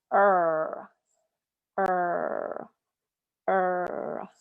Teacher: when you are making the r sound your tongue goes up and back